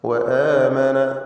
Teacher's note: വആമന ഹംസയെ ദീർഘിപ്പിക്കുന്നു. ഈ ദീർഘത്തിൻ്റെ പേര് മദ്ദുൽ ബദൽ എന്നാണ്. എന്നാൽ നമ്മുടെ റിവായത്ത് പ്രകാരം 2 ഹറക്കത്തിൻ്റെ അളവിൽ മാത്രമാണ് ദീർഘം, തബീഇയ്യ ദീർഘം.